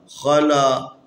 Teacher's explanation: یہ خا بھی حروف استعلاء میں سے ہے، اس کو بھی ہمیشہ موٹا پڑھنا ہے۔